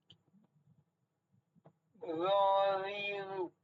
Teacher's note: জিহ্বাটা উপরের দাঁতের ডগায় থাকবে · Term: জোয়া